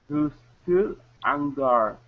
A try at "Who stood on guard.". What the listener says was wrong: Okay, open your mouth up. You're still saying stood. Okay, so it's stood.